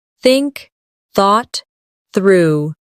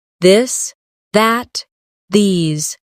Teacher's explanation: For example, the th sound in think or this. Put your tongue between your teeth and push air out for think. For this, your tongue touches the same position but with your voice turned on.